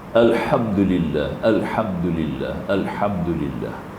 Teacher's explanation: Ha maftuhah juga, mim syafawi kena zahir kepada dua bibir. Mim kan, huruf bibir kan.